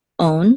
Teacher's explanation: the accent is on the last syllable